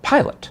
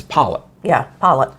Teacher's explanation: East Tennessee, they take the I sound and they flatten it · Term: flatten the I